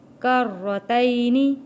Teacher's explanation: را کے اوپر تشدید ہے، سختی کے ساتھ تھوڑا رک کر ادا کرنا ہے تشدید والے حرف کو۔